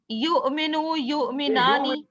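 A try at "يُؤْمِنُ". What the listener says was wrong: آپ دیکھیں آپ غلط پڑھے, آپ واو پڑھ رہی ہے, واو نہیں ہے, حمزہ ہے نا, تو آپ نے اس کو ہلکا سا جھٹکا دینا, یؤمنو یؤمنانی. لیکن آخری صیغے میں کیا ہوا؟ آخری صیغے میں تو کیا ہو گیا, 2 حمزہ اکٹھے ہو گئے نا. اس نے واو میں پیش کر دیا, تو یہ نارمل ہو گیا اومنو. یہاں آپ نے کسی قسم کا جھٹکا نہیں دیا, یہ واو ہے.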